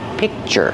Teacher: you don't hear the C, but the position is there.